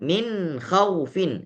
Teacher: dibacakan min khaufin sehingga nunnya terdengar jelas. Tapi dia tidak ada gunnah. Enggak dibaca min khaw, tidak.